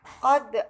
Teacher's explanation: huruf berharokat dhammah. Selanjutnya qad ada hukum bacaan qalqalah sugra karena huruf qalqalah yaitu dal sukun terletak di tengah ayat atau tengah kalimat sehingga cara membacanya harus dipantulkan secara tipis